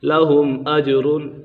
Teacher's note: لَهُمْ أَجْرٌ یہاں پر اظہار شفوی کا قاعدہ لگ رہا ہے اور جیم کے اوپر کلکلا ہو رہا ہے